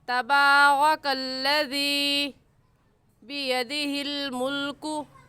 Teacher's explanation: अल्लज़ी को एक अलिफ के बराबर खींच कर पढ़ेंगे, क्योंकि या साकिन से पहले ज़ेर आ गया तो उसे या मद्दा कहेंगे, और या मद्दा को एक अलिफ के बराबर खींच कर पढ़ते हैं, ना इससे कम और ना ही इससे ज़्यादा।